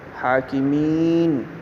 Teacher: یا ساکن ما قبل مکسور ہے، اس کو بھی لمبا کر کے پڑھیں گے